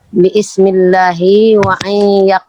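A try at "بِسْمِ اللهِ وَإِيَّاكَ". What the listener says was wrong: Gak usah baca ini Bu, alifnya gak usah baca. Kan sampean baca Bismillah itu kan gak dibaca alifnya.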